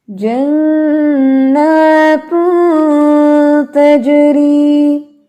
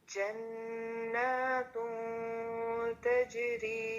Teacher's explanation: اخفا کو باریک کرنا ہے ہونٹ پھیلا کے اور دونوں ہونٹوں میں گیپ ہونا چاہیے